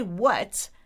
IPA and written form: wʌt (what)